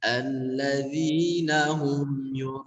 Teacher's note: hamzahnya tadi samar-samar ke huruf ain, kurang jelas ya, harusnya jelaskan ke huruf hamzah